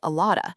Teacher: The words are linked and compressed together. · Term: connected speech